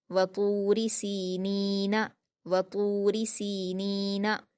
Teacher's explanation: तो पर वाव मद्दा है 2 हरकत खींचकर पुर पढ़ेंगे